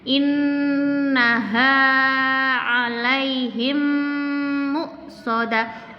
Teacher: ada nun bertasdid, maka harus didengungkan, ditahan di innya ini.